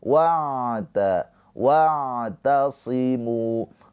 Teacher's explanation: cara baca ain sukun jangan tertahan jangan wa tapi dialirkan